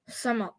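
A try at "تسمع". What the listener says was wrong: It's got to be sukoon. You made it sound like this. Sama. I don't want sa. I want s.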